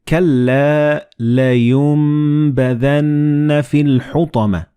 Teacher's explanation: the noon and ba they will be assimilated together and you will pronounce them as meme